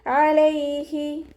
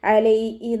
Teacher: ഹ sound വരുന്നത് അക്സൽ ഹൽക്കാണ്. തൊണ്ടയുടെ അവസാന ഭാഗം.